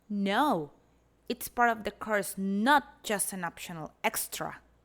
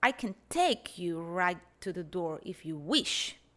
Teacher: the speaker places the prominence in elements of the speech that are usually taken for granted, such as function words like prepositions